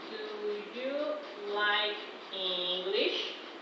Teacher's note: Rising intonation. It is usually found in yes/no questions.